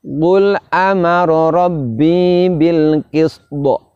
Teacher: Huruf sin diantara sifatnya adalah hamas, mengalirnya nafas, juga sofir yaitu adanya suara mendesis. Sedangkan to salah satu sifatnya adalah kolkolah.